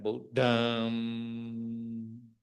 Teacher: Nasal sound have to close, little bit close or fully close. According to the Myanmar tradition, they fully close the nasal sound.